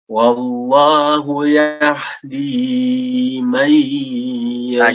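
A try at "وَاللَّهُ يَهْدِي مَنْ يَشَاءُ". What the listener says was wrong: Jangan terlalu panjang juga. Dua harokat. Jangan terlalu panjang. Wallahu yahdi man yasha.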